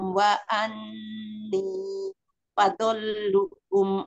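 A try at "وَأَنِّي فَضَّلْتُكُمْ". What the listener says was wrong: Wa anni faddo-nya ada tasdidnya Umi. Wa anni faddaltukum.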